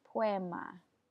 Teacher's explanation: But in Spanish, those two vowels combine and they form something that's very similar to a W.